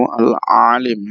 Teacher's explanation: Huruf lamnya dibaca panjang karena setelah lam ada huruf ya yang berharokat sukun